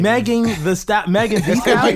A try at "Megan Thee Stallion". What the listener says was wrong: It's because you're trying to say D. Megan D. Megan D.